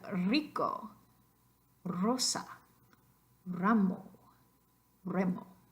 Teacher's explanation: So all of these single written letter R's are going to be the vibrante multiple.